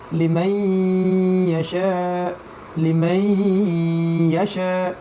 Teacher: সময় দিতে হবে একটু, 1 সেকেন্ড, এবং গুণনাও করতে হবে।